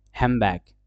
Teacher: N changes into M because it's easy to pronounce before বি